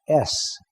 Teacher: the s sound is a subtle whistle it's caused by uh forcing air between two hard surfaces like